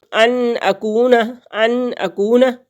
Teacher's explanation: نون ساکن کے بعد حروف حلقی میں سے حمزہ آ گیا تو یہاں پہ اظہار کریں گے